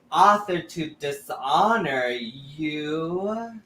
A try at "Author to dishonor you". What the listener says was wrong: You. It's not a question. It's a sentence. Author. You really want to. You don't want there to be a question mark on you. You. And now think you.